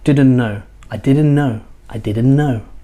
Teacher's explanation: So what happens? The T is lost. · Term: The T is silent